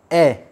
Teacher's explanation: अब आप उच्चारण करके देख सकते हो, ए हमारा मुंह जब हम ए का उच्चारण करते हैं आधा खुला होता है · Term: अर्धविवर्तमुखी